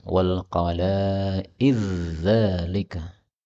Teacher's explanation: dal ketemu zal, boleh idgham